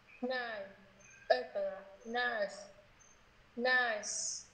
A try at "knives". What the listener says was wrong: Em thầy nghe thành nice. Đấy em đọc là thầy nghe thành chữ nice một cách rõ ràng luôn. Em biết chữ nice, nice to meet you nè, thấy chưa? Knives. Chính âm z rất là quan trọng nha mọi người. Knives. Knives.